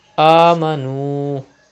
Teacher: There is pesh before waw sakin. It is waw madda. You have to stretch up to 2 harakat.